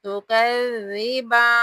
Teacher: گے، تکذبان، تکذبان نہیں کرنا، یہ غلط ادائیگی ہو جائے گی، نرمی کے ساتھ زال کو پڑھتے ہوئے، مشدد ہے تو تھوڑا سخت کر کے پڑھیں گے